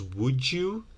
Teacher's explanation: And similarly, D plus Y might become J.